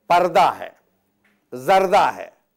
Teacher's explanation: अगर आपने पर्दा बोल दिया या ज़र्दा बोल दिया तो ये लफ्ज़ गलत हो गया। तो हे है, लेकिन हे की आवाज़ नहीं आ की तरह बोलेंगे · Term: हे मुख्तफ़ी